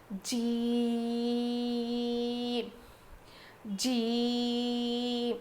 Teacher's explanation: جیم ادا ہوتا ہے زبان کے بیچ والے حصے سے. زبان کے بیچ کے حصے سے جیم ادا ہوتا ہے.